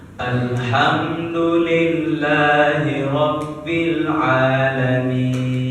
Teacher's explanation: Di akhir ayat itu namanya mad arid disukun. Mad arid disukun itu panjangnya 5 sampai 6 harokat. Makanya kita di akhir ayat mad asli di akhir ayat atau waqaf itu panjangnya 5 sampai 6 harokat.